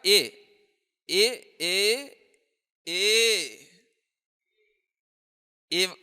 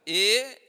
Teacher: ए कहा तो छोटा हो गया, ए थोड़ा बड़ा हो गया, प्लुत ये ए हो गया